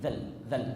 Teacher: Agak sedikit lidahnya digigit, dzal, ya.